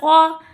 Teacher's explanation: قاف زبر قا تین حرفی حروف ہے، حروف لہاتیہ میں سے ہے۔